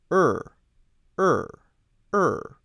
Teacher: the tongue is curling up and backward trying to point to the back of the throat